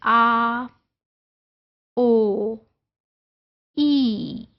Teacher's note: Because single vowel sound है and beginning of the sound and ending of the sound that is the same. There is no change in the position of your tongue. There is no gliding at all. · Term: monophthong